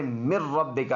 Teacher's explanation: ناک میں آواز نہیں جاتی. مر ربکا اس میں ادغام ہوتا ہے لیکن بغیر غنہ کے